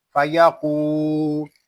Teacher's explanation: قاف یہ حروف مستعلیہ میں سے ہے، اس کو پر پڑھیں گے. یہاں واو مدہ ہو رہا ہے، اس لیے قاف کو ہم ایک الف تک کھینچ کر پڑھیں گے.